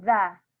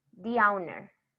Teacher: Pero cuando la siguiente palabra empieza con una vocal, when the next word starts with a vowel, the pronunciation is going to be di.